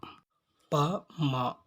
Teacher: ப, ம ஆகிய இரு எழுத்துக்களையும் இரு இதழ்களை இணைத்து உச்சரிப்பதால் இவற்றை ஈறிதழ் ஒலிகள் என்பர்.